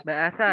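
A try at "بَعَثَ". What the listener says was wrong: Ba'asa. Ba'as dengan ain. Ba'asa.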